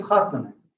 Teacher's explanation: it's better in chasana to stress the anti-penult